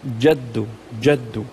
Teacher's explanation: الجيم من الاحرف الشجريه يعني من شجر اللسان يعني من وسط اللسان يعني ما ينفع تقول مثلا وانه تعالى جد ربنا لازم تشدها